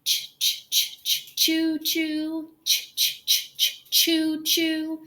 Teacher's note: with a choo choo train so it cannot be made continuously your tongue is behind your top teeth and it drops down when the puff of air comes through your mouth · the CH sound is a very short and quick sound you can't hold that sound out very long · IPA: [tʃ], tʃ